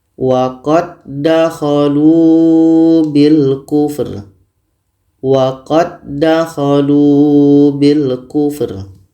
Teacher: Bertemu huruf yang sama. Karena bertemu dua huruf yang sama, maka dal ini sudah sempurna masuknya kepada dal yang kedua. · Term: idgham mutamathilain